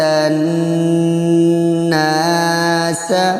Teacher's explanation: نون مشدد، اس کو گنہ کرنا ہے، پھر ایک الف کے برابر کھینچنا ہے